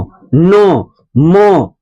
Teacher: इसका उच्चारण कहाँ? नासिका से, यानी नाक से आ रहा है। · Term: अनुनासिक